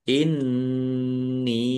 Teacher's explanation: nun tasdid dibaca ghunah atau mendengung. Ditahan biar tampak mendengungnya.